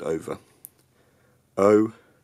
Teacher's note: from a phonetic point of view these words don't have an R sound at the end